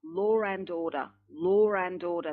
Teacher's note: There's a slight R between the W and the A.